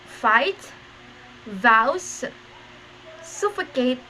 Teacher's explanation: these are the sounds formed with the upper teeth and the lower lips the initial sounds of these words fight vows suffocate is labudentals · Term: Labiodentals